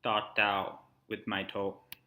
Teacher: the pitch contour following that line we saw in the graph it starts a little bit lower Rises and then smoothly drops off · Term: falling tone